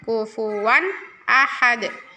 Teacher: Ada dal sukun, itu bacaan qalqalah harus mantul.